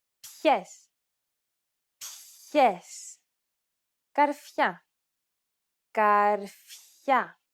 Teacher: we hear a slight hissing sound between the consonant and the diphthong